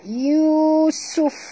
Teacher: dan bunyikan hamas pada huruf fa.